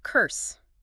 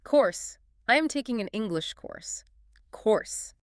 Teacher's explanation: Notice how your jaw literally has to drop. It is an elongated, open OR sound.